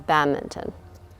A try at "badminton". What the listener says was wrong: You don't pronounce the N. Like a mitten that you put on your hand.